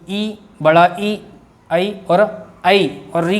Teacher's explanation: तो क्या होगा? ये जीभ और इसका जो नुकीला वाला भाग होता है वो आगे की ओर लगता है, टकराता है।